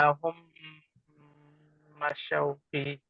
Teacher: মিম সাকিনের পর মিম এসেছে, গুণ হবে